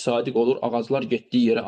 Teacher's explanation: Ağaclar sözündə lar şəkilçisi vurğu qəbul edibdir. İsimlərdə vurğu larə düşür.